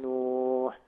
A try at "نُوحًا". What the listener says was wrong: إذا وقفت على كلمة نوحا تقول نوحا بالألف، ما تقولش نوح كده خطأ. التنوين الفتح لما بنقف عليه لابد نقلبه ألف.